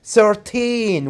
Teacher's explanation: teen numbers it's 9 13 we put the stress on teen